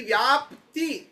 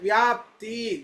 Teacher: ಈ ವ್ಯಾಪ್ತಿ ಕೊನೆಗೆ ತಿ ಕೇಳಿಸ್ತಾ ಇದೆ. ಇದನ್ನ ಅಲ್ಪ ಪ್ರಾಣ ತಕಾರ.